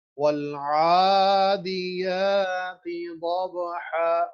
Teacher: یا کے اوپر کھڑی زبر. دونوں مد ہیں تو مد کی مقدار وہ ہمیں ایک الف کے برابر پڑھنی ہے